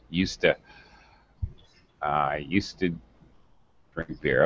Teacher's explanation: Definitely not UZ. Okay, definitely not two syllables in the verb. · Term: reduced pronunciation